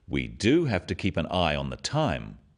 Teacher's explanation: Notice the emphasis on the word do